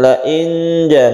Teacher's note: nun mati bertemu jim, ini kita panjangkan karena ikhfa hakiki